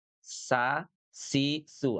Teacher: ketika mengucapkan huruf Seen, pangkal lidah, bagian belakang lidah, tidak terangkat; Itu namanya Istifal, ya.